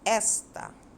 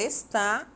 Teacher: na palavra destacada esta, a sílaba tônica é o es. Esta. Já na palavra está, a sílaba tônica é o tá.